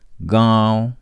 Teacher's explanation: उच्चारण नाक और मुंह से होता है और उच्चारण में लगातार रहती है जैसे गांव दातागंज शायद अत्याधिक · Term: अनुनासिक